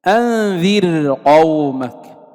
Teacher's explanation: فإن الراء ترقق. ولا يلتفت إلى حرف الاستعلاء لعدم اتصاله بالراء. إذا لا نفخم الراء ونقول وقع بعد الراء حرف استعلاء، لا، الراء ترقق فإن حرف الاستعلاء منفصل لا متصل.